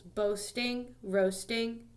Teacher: the stress is on the beginning of the word, and it's got two syllables.